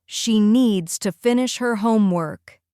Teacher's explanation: The important words are needs, finish, and homework.